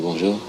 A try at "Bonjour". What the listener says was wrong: Non, là, t'as l'air de me dire au revoir. Dis-moi vraiment bonjour.